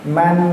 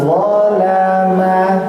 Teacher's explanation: membacanya bukan dengan n yang sempurna pada huruf nun sukun, tetapi nunnya dibaca samar-samar sahaja, tidak menempel di langit-langit mulut ataupun di bawah mulut kita